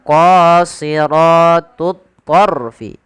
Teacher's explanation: Kemudian pada lafaz ra di sini ada hukum tajwid berupa huruf ra tafkhim atau bacaan ra tafkhim, yang dimana ra-nya dibaca dengan tebal karena ada huruf ra sukun yang didahului dengan huruf fathah